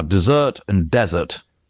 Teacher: Desert, the stress is on the second syllable. Desert, the stress is on the first.